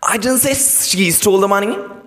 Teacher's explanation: Now you're pressurizing the word she.